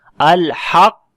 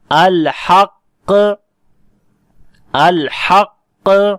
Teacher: جب حق کی آواز آئے گی تو یہ مخرج زبان کی جڑ اور تالو کا نرم حصہ مل گیا، تو یہ پہلا ساکن حرف ادا ہوا، یعنی کہ زبان کی جڑ کا تالو کے نرم حصے سے ملنا یہ چیز واضح کرتا ہے کہ یہاں پر آپ نے ابھی ساکن حرف پڑھا ہے۔